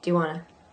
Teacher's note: do you want to ends up being a little bit of a J in there